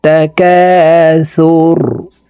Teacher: রকে ওয়াকফের ক্ষেত্রে সাকিন করে ফেলবো।